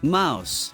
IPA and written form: maʊs (mouse)